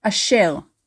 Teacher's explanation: formally we stress the last syllable in the word